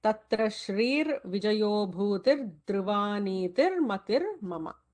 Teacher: So all the Visargas are converting to Ra in the second line.